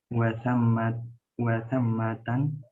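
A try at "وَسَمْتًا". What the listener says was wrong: wasammata pakai tasdid. Tidak tan. Wasammata tidak ditanwin.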